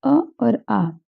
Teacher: अ और आ यानी छोटा आ और बड़ा आ दोनों के दोनों ये कंठ से उच्चारित होते हैं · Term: कंठ अक्षर